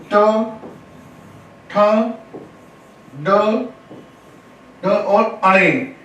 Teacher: टे वर्ग का उच्चारण किससे होगा? मूर्धन्य से।